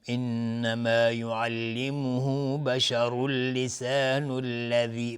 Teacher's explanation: بشر اللسان الذی تنوین بعدش لام میشه ادغام بدون غنه